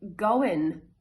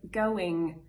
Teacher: people pronounce an alveolar n instead of that ng